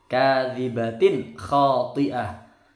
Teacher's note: Ini bacaan idhar halqi, tanwin ketemu kha. Bacanya jelas. Khati'ah. Toknya tebal.